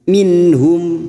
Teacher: nun sukun bertemu ha idhar halqi, nun sukun dibaca jelas tanpa mendengung.